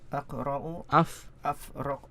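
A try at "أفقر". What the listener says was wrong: fa qaf ra. Urutannya jangan dibalik-balik ya. Afqaru.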